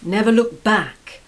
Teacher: notice the stress on the word back